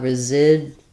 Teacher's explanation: We're stressing on the zid syllable, and again, we have another Z sound for our letter S. And then this DU, residual, is a J sound.